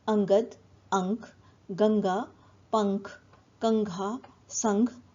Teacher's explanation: यदि अनुस्वार क वर्ग के वर्णों अर्थात क, ख, ग, घ से पहले हो तो उच्चारण अंग के समान होगा